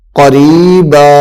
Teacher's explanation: با دو زبر بن قریباً قریباً آگے وقف قریبا یہاں پہ را کو لمبا کریں گے چونکہ را کے بعد یا حروف مدہ میں سے ہے